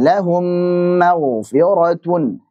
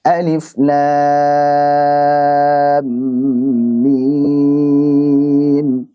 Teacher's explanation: mimnya diidghamkan ke mim berikutnya sehingga jadi mim bertasydid dan dipanjangkan gunnahnya. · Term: idgham mimi